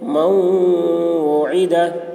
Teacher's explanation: نون ساکن کے بعد حروف جر ملون میں سے واو آ رہا ہے، اس لیے میم نون کو واو سے ملا کر غنہ کے ساتھ پڑھیں گے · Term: ادغام ناقص